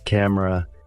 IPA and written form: ˈkæmərə (camera)